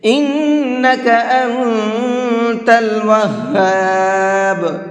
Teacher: ان کے نون کے اندر غنہ کریں گے، انت کے نون کے اندر اخفا کریں گے۔